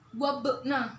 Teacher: Jadi dibaca wabna, yaitu ba sukunnya dibaca memantul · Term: qalqalah